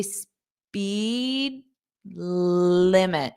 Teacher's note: we're not going to push out that D because it will force us to take a pause.